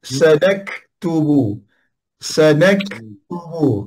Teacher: Jadi kita tekankan kaf dan kita bunyikan hamas ataupun bunyikan angin.